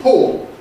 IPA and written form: pɔo (pull, pool)